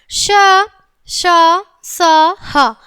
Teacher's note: घर्षण अर्थात रगड़ के साथ उच्चारण होने के कारण इन्हें ऊष्म व्यंजन कहते हैं बच्चों। जब इनका हम उच्चारण करेंगे तो एक घसड़ सी होगी।